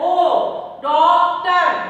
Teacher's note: आप लोग लिखते हैं डॉक्टर, जबकि डॉक्टर ओ मुंह होठों को गोल करके बोला जाता है ओ डॉक्टर, डॉक्टर नहीं बोलते।